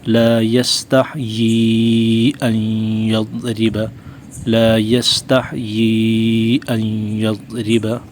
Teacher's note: یا پہ دیکھیں مد ہے تو کم از کم 2 الف کے برابر کھینچیں گے